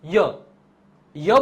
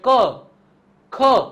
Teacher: અ સંભળાય છે ક ખ તો પાછળ અ સંભળાય છે પરંતુ તમે ય બોલો છો તો એની અંદર પાછળ અ સંભળાતો નથી એટલે કે જાણે સ્વર હોય ને એવા દેખાય છે મતલબ કે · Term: અર્ધસ્વર